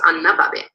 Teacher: Whereas if it's a possessive noun, not a pronoun, you get low tone, so anna babe. So replacive tone happening, but this time at the phrasal level between words.